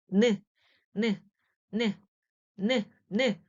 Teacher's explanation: 바로 혀끝이 윗니몸에 붙는 모양을 본떠서 발음할 때 나는 모양을 그대로 본떠서 니은이라는 글자를 만들었어요.